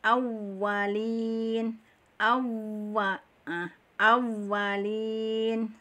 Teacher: Waw makhrajnya adalah 2 bibir. Waw menyonyong, ya. Waw menyonyong di antara 2 bibir. Sifat makhrajnya adalah di antara 2 bibir, ya.